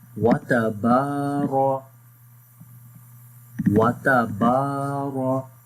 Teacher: After the ra is in green color with fatha sign, so we make this ra in heavy sound like bold sound. So we say watabara, watabara.